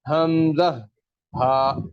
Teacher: حمزہ اور ہا دونوں اقصی حلق یعنی گلے کے آخری حصے سے جو سینے کی طرف والا حصہ ہے وہاں سے اس کی ادائیگی ہوتی ہے